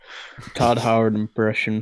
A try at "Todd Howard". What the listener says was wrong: Card. You say Card Howard. It sounded like it sounded like you just said Card Howard. It's still Card Howard.